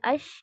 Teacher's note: جب آپ شین کہتے ہیں یا اش کہتے ہیں تو آپ کی آواز جو ہے اوور آل پورے ماؤتھ کے اندر اسپریڈ آؤٹ ہو جاتی ہے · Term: تفشی